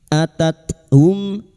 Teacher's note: Atat hum mim sukun bertemu ro idhar syafawi. Mim sukun dibaca jelas tanpa mendengung.